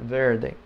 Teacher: the r is not real strong it's almost like a th sound